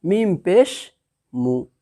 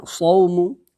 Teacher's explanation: پیش کو جلدی پڑھیں، تھوڑا بھی نہ کھینچے، معروف پڑھیں اور مجہول آواز سے بچیں